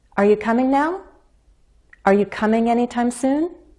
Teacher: the verb is the more important word so I place emphasis on coming · notice how those adverbs of time are not stressed their content words but the verb is the more important word